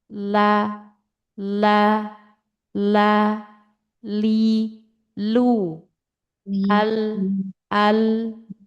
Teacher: ujung lidah atau ujung tepinya sini ditempel di gusi gigi seri atas atau tumbuhnya mulai tumbuhnya gigi di sini. · ujung lidah bertemu dengan atau menyentuh gusi gigi seri atas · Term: huruf lam